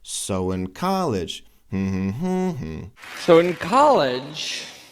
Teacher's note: so we've got a very strong movement in both volume and Pitch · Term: strongest syllable